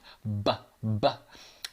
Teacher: I need to use the breath in my cheeks to kind of pop my lips open to make the sound. B, b. And I'm also humming a little bit as I make that sound.